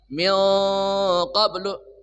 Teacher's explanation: An ya an ya an biya biya mad wajib mutsil thabi'i bertemu hamzah di satu kata dibaca empat harakat anbiya Allah tebal ya atau taglis memenuhi rongga mulut Allah minqoblu nun mati Berti pertemu qof nunnya tebal ya. Nunnya dibaca samar dan dengung diserti dengan tebal karena bertemu huruf qf. Qaf itu huruf istilla.